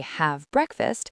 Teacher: we usually drop the hard sound at the end of have, so it flows right into breakfast